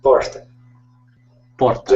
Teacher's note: os mineiros costumam puxar um pouco o R